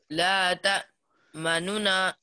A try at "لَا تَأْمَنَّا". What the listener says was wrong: نہیں اشمام، روم نہیں، اشمام کرو، غنہ بھی کرو نا. جب غنہ کرتے ہو نا، جب غنہ کرتے ہو مننا میں، تو اس وقت ہونٹوں کو گول کرنا ہے.